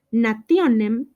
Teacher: la T se pronunció algo semejante a ts, a una T con una Z juntas. Y finalmente nos dio la C o la Z en español. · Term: palatizaciones